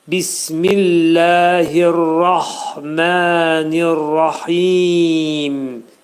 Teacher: Demək burada rahmən kəlməsində ra qalın deyiləcək. · Hə hərfinin üstündə ani müddətdə tormuzlanma, hə hərfinin məxrəcini boğazın ortasından çıxarırıq. Mə dedikdə iki səs qədər uzadırıq, çünki üstündə məd var.